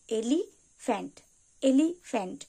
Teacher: আমাদেরকে এলি বলার পর একবার থামতে হচ্ছে দেন আমরা ফ্যান্ট বলছি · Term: দুই সিলেবেল